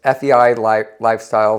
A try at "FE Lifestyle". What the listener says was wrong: I think it's FE. There's no I. FEI. You did. See, I told you.